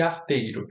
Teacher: E em arteiro, nenhuma das coisas acontece. Nem o alçamento e nem a palatalização.